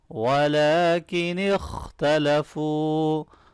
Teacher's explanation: لام کے اوپر کھڑی زبر ہے، اس کو لمبا کریں، خا کو موٹا پڑھیں گے ، آخر میں وہ مدہ کو بھی لمبا کرنا ہے، وَلَكِنِ